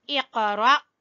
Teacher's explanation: قاف کے اوپر قلقلہ کریں گے اور را کو جھٹکا دیں گے، کیونکہ آگے الف ہے جس کے اوپر جزم ہے، تو یہاں پر جھٹکا آئے گا۔